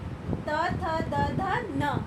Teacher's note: जब हम इनका उच्चारण करेंगे, आप खुद भी इसका उच्चारण करके देखिए, तो हमारी जो टंग है, जो जीभ है, वो दांतों को स्पर्श करते हुए इन ध्वनियों को बाहर लाने में सहायता करती है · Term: त वर्ग